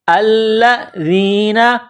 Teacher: حمزہ کو لام کے ساتھ پلس کرنا ہے، لام میں سختی کرنی ہے